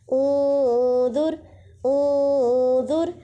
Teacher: نون ساکن کی آواز کو ناک میں چھپا دیں گے